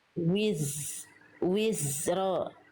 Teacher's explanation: Jadi, zai suaranya bukan memantul tapi mengalir. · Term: zai sukun